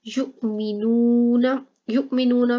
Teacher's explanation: हमजा के ऊपर साकिन है, ठीक है, तो इस वजह से इसको झुटका देके पढ़ेंगे। नूना में व मद्दा है, इसलिए लंबा किया है।